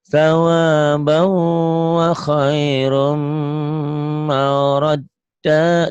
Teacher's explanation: Sawabau idgham bigunah tuh ditahan.